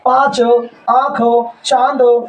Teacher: इसमें जो हवा होती है मुख और नाक दोनों से निकलती है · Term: अनुनासिक